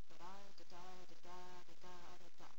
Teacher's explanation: Shakespeare's basic pattern is the iamb, which is unstressed, stressed.